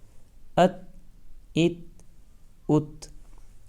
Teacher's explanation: حمزہ تا زبر ات، تا حرف ساکن میں سے ہیں، تو اس لیے زبان اپنے مخرج پر لگ کر بالکل بھی نہیں اچھلے گی